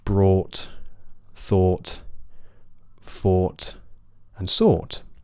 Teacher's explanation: Yeah, make sure your lips begin relaxed. And then for the thought vowel, these words do have rounded lips from the beginning